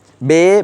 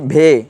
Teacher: তেমনিভাবে উর্দুতে বে যেটা সেটা হচ্ছে অল্পপ্রাণ ভে যেটা সেটা হচ্ছে মহাপ্রাণ